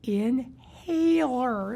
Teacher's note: It's a lazy L at the back of my throat.